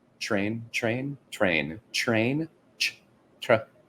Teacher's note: sometimes the T sound in words like TR sounds like a CH